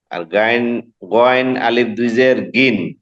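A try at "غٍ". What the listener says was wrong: আলিফ কোথায়?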